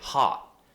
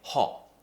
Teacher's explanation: This very round shape with the mouth where we lift the tongue in the mouth, it creates such a British sound